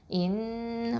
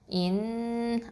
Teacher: இன் மூக்கில் நிறுத்தி வச்சு சொல்லுங்கள் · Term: குன்னா